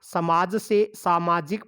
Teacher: जैसे हम समाज शब्द में इक प्रत्यय जोड़ते हैं तो सामाजिक बन जाता है। समाज में जो स है वो सा में बदल गया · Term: ह्रस्व स्वर दीर्घ स्वर